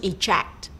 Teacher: To eject, the stress is on the second syllable.